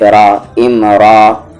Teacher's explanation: را یہاں پر ہیوی ہوگا کیونکہ زبر ہے اس پہ، اور 2 زبر میں سے 1 زبر ہٹ جائے گا کیونکہ آگے رکنا ہے، آیت ہے، اور اگر 1 زبر رہتا تو وہاں پر کوئی چینجز نہیں ہوتا۔